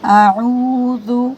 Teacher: اعوذ، حمزہ کے بعد دیکھیے عین ہے نا، تو عین کو کھینچنا ہے اور عین حلق سے نکالیں گے